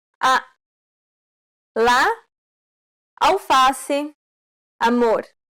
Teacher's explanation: This vowel sound is very similar to the A in father. This vowel sound is considered an open A sound because the jaw is low